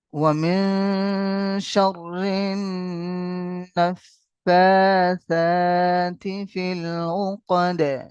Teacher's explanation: তাসদিদওয়ালা নুন এবং তাসদিদওয়ালা মিম কে গুন্না দেওয়া ওয়াজিব, ওয়াজিব গুন্না, গুন্না দিয়েই আমাদের পড়তেই হবে।